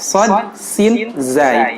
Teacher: Ujung lidah bergesekan dengan ujung langit-langit yang bagian agak tengah ya.